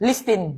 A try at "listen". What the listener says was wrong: Sus. Silent T nga ni. Silent T. Listen. Hindi listin, ha?